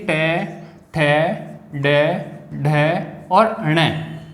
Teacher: टू का मतलब ट वर्ग, और फिर देखिए र, ये ये र, उसके बाद देखिए स, अपन षटकोण वाला बोलते हैं जिसका उच्चारण स्थान मूर्धन्य है, ये स, इनका अपन उच्चारण करते हैं तो ये मूर्धा से होता है। तालु से नीचे और दांतों से जो ऊपर उभरा हुआ भाग है वो मूर्धन्य है